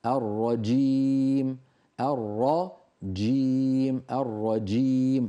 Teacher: حرف قوي انفجاري الجيم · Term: حرف الجيم